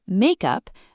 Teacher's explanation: in the noun makeup, the stress is on the first word, make